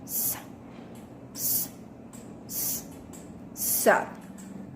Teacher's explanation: With manner of articulation, fricative, and place of articulation, alveolar.